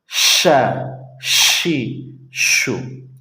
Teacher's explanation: لیکن ایک ہوتا ہے شین جو کہ بڑا ہے، بڑی شین ہے اور اس کی آواز بھی موٹی ہوتی ہے اور اس میں موٹی سیٹی ہوتی ہے، وہ ادا ہوتی ہے وہاں سے جہاں سے جیم ادا ہوتا ہے، زبان کے بیچ اور اس کے سامنے اوپر کے تالو سے، وہاں سے آپ کو ملانا ہے اور زور سے آواز لگانا، ش، شی، شو، ٹھیک ہے۔